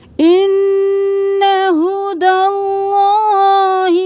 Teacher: یہاں پہ خدا بھی نہیں کرنا، خدا بھی نہیں کرنا، ہا ہے، بھاری آواز میں ہوگا، سینے سے نکالیں گے. نون پہ تشدید ہے، غنہ کریں.